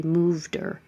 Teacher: we can get rid of this H in the pronoun her and connect the D and say moved her